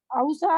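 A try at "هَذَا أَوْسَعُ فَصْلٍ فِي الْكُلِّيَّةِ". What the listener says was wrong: पेश का ख्याल रखें, अफ़अलू होता है ना।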